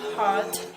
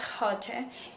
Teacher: Chinese learners tend to add a vowel after a consonant, which has after P, B, T, D, K, and G, as these consonants only appear in the initial spot in a Chinese syllable.